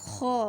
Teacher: خو ادنا حلق سے ادا ہوتا ہے یعنی کہ پہلے حلق سے خو ادا ہوتا ہے